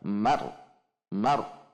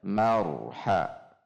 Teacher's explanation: tapi kalau tebal Mar tidak Mar tetapi Mar selanjutnya perhatikan juga ro memiliki sifat bainiah sehingga tidak dibaca Mar ditahan atau dihentak Mar Mar dihentak tetapi bainiah saja jadi ada getar yang terjaga